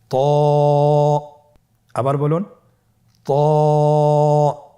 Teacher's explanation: জিহ্বার আগা সামনের উপরের দুই দাঁতের গোড়ার সঙ্গে লাগিয়ে উচ্চারিত হয়। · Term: মোটা হরফ